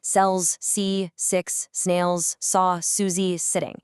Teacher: force air through a tiny, precise little channel formed by your tongue and your teeth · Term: hard s sounds